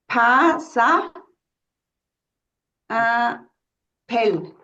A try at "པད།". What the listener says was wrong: Pay, A sound. Because suffix is tha and sa, sa and tha, they make the same effect. A sound.